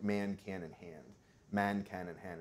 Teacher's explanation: and our primary interest is in that F1 so the height whether the tongue goes up before nasals or stays low